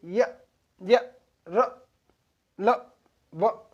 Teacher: वे व्यंजन जिन्हें उच्चारण करने पर मुख कम फटता है फिर भी मुख से वायु निकल जाती है, उन्हें अंतस्थ व्यंजन कहते हैं।